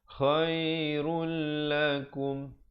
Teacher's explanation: ro baris depannya terus masuk ke dalam lam. Tanpa didengungkan. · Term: idgham bila gunnah